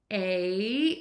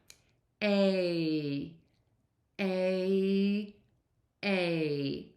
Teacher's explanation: While you do that, the tip of your tongue is going to start low, back of the tongue is going to be pulled high up and then your tongue will move to Flat in the mouth